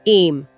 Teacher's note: अंत में हल्का म का अनुनासिक स्पर्श होता है। नाक से हल्की आवाज इसे आई एम नहीं बोलना है।